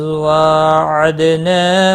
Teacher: وَإِذْ وَاعَدْنَا مُوسَىٰ 40 لَيْلَةً ثُمَّ اتَّخَذْتُمْ وَإِذْ ذال ساکن کو ہلانا نہیں، واو کے اوپر کھڑی زبر ہے، ایک الف کے برابر کھینچ کر پڑھنا ہے۔ دال ساکن پر قلقلہ ہوگا، نا الف مدہ ہے، ایک الف کے برابر کھینچ کر پڑھیں گے۔